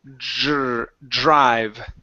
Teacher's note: give me a DR, which is a JR sound.